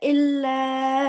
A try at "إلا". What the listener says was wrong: इल्ला नहीं अल्लाह अकूला इल्ला नहीं है। नून साइलेंट है, हमजा को लाम से मिलाइए।